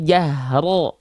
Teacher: huruf ro itu ketika dia berharakat fathah itu harus dibaca dengan keadaan yang tebal